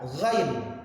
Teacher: Karena yang namanya huruf gha ini adalah ghain namanya. Ghain itu cara prakteknya kayak semacam menyebut g, tapi kita ada dorongan angin daripada tenggorokan kita.